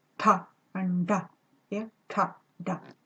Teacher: if we curl the tongue a little bit back and we contact the end of the balcony of the mouth, the back part of the alveolar ridge, then we can get some retroflex sounds.